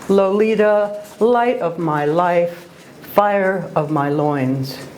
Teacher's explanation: the repetition of the long o and the long i vowel sounds creates marvelous and memorable music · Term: asants